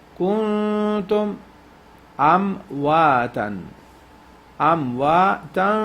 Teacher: This is إخفاء نون ساكن, you stretch it 3-second duration.